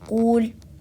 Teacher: A few common mistakes here are pronouncing the qaf as a kaf, saying kul, stretching the dhamma sound on the qaf